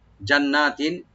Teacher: জান্নাতিন, জিমের উপরে জবরটা স্পষ্ট করে উপর আমরা রাইট দিয়ে, আর নুন মুসাদ্দাত এক আলিফ টানবো, এখানে গুণনা হবে এবং পাশাপাশি এক আলিফ টানবো